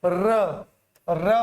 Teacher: तो जब र बोलोगे तो जीभ में वाइब्रेशन फील हो रही है, कंपित, र, ठीक है ना, तो इसको बोला जाता है कंपित व्यंजन।